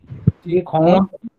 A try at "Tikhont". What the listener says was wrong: Tikhont, not khont. See, there is no circumflex there. Open it is. Tikhonto. Because there is no circumflex. Therefore, it follows this pattern. Otherwise, it would have gone the earlier pattern. Rat pattern, it would have gone.